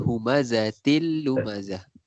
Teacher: Kemudian humazatil, tanwin til tu tanwin bertemu lam pun sama juga, memasukkan tapi tak dengung.